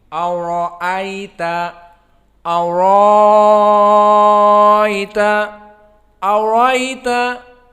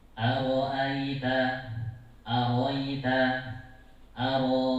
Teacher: Ra-nya usahakan mufakhamah, belajar tafkhim.